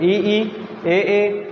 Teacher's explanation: अग्र स्वर जो आगे से बोले जाते हैं